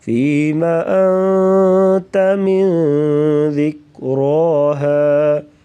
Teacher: أنت غنہ کریں گے، من پہ بھی غنہ ہوگا۔